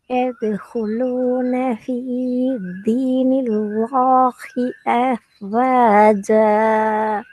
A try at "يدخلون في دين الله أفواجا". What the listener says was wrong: சரி, இப்போ ஃபீயை நீட்டினீங்க. ஓகே, ஃபீ அதே அந்த அளவுக்கு தீய நீட்டு இல்லை. ஃபீயை நீட்டின அளவுக்கு நீட்டல்ல. அது போல தீய நீட்டின அளவுக்கு அல்லாட மூணும் ஒரே அளவுக்கு நீட்டணும். 3 செகண்ட் நீட்டுறது அப்படியா? 2 செகண்டுக்கு. சரி, அங்கதான் பிரச்சனை. நீட்டுறதுலாம் பிரச்சனை.